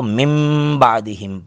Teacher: نون ساکن کو میم سے بدل کر من کو من بعدہم پڑھیں گے۔ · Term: قانون اقلاب